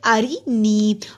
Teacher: را کو باریک پڑھیں گے، را کے نیچے زیر ہے، نی کو لمبا کیا، جزم والی یا سے پہلے زیر ہے، حروف مدہ ایک الف کے برابر لمبا ہوگا۔